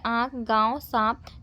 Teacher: मुख और नाक से दोनों के साथ एक साथ हम प्रोनाउंस करते हैं उसे ही यहां पर अनुनासिक कहा जाता है